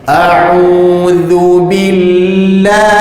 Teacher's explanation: Lam bagi lafzul jalalah baris atas dipanjangkan sekurang-kurangnya 2 harakat.